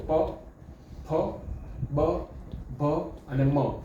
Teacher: પ ફ બ ભ મ આમાં તમારા હોઠ ચોંટે છે જુઓ પ ફ બ ભ અને મ આ હોઠ ભેગા થયા વગર તમે આને બોલી જ ન શકો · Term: ઓષ્ઠીયાવર્ણ